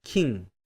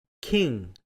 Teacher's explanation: 한국어 발음처럼 혀 뒤쪽만 사용하면 king 하고 발음이 되지만 혀 옆날에 힘을 주어 올려주어 발음하면 king 하고 발음이 됩니다.